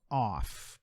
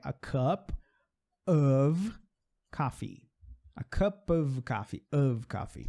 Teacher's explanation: O F ali vai ter um sonzinho de V.